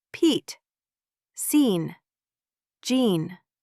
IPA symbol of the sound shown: iː